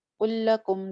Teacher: 2 دفعہ لام آ رہا ہے, یہ بھی ادغام کی ہی ایک قسم ہے